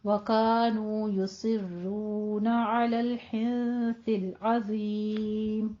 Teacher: साद को पुर पढ़ना है और वा को मुफख्खम कर देना है, दोनों पुर पढ़े जाएंगे · हिंस में नून साकिन है, सा आगे हुरूफ इख्फा में से इख्फा की कीजिए, 2 काउंट करना है